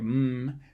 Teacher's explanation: with an m you actually have air flowing out through your nose at the same time as you're making it · there's no puff of air when you make a mmm because air is consistently flowing out through your nose as you make it that's how you hum actually and you can make an m